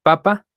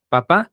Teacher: Papa, la sílaba tónica es la primera. Papá, la sílaba tónica es la segunda.